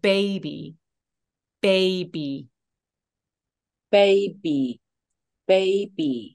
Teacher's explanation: 보고 따라와 주세요 baby baby baby baby 너무 좋아요 맞아요 그래서 입술이 꼭 다물어졌다가 터지는 느낌으로 소리를 내주시면 되게 좋아요